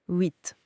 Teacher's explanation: C'est comme un ouah, mais avec les lèvres bien serrées, pincées.